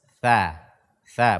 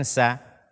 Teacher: dha, dzal dan tha ini makhrajnya satu, yaitu ujung lidah kita menyentuh ujung gigi seri atas. Tha, bukan sa.